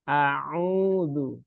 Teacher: Pakainya ain bukan hamzah ya, bukan au ya.